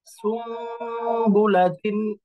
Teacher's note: নুন সাকিন এবং তানবিনকে মিমের মতো করে পড়তে হবে, অর্থাৎ মিম দ্বারা পরিবর্তন করে দিতে হবে। উচ্চারণে তখন আর নুন থাকবে না, এটা মিমের মতো উচ্চারণ হবে। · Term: ইকলাব